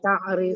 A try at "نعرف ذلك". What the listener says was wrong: Na'rifu bukan ta'rif. Kayak ada saya dengar ta'rifu.